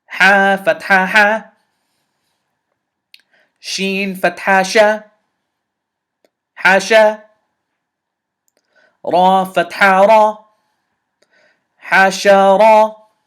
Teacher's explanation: Now this ra maftuha is heavy, this ha is light, this sheen is light. So light, light, heavy.